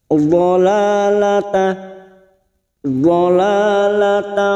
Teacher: Karena di sini kita wasal atau terus, maka tak marbutoh kita baca tak.